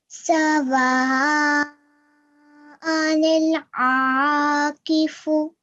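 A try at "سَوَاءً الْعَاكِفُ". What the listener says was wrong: So we could make this part a bit longer. So it is Madul Kabir. The extra long stretch, the bigger one.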